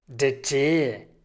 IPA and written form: deːɐ̯ teː (der Tee)